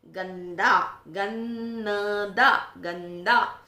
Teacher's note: गंदा में न क्लियर सुनाई दे रहा है, गंदा गन्नदा गंदा। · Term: पंचमाक्षर का साउंड